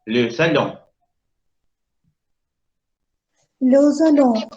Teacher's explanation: Hago lo que yo quiera, dice la N. Hago que la O nasalice. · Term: ON nasalizada